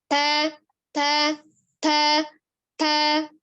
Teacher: Ta-nya ada alhams. Ada udara yang mengalir.